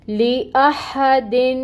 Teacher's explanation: نون کو یا تنوین کی آواز کو ظاہر کر کے پڑھا جاتا ہے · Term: اظہار